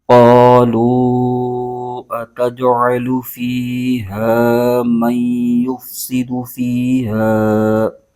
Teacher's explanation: قاف پر زبر ہے اور آگے الف ہے، تو یہاں پر الف مدہ ہو رہا ہے، اس کو ایک الف کھینچ کے پڑھیں گے